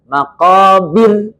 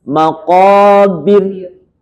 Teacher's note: Itu ro-nya dibaca dengan tarqiq. Tarqiqir ra, tipis. Kenapa? Karena ro-nya sukun aridah.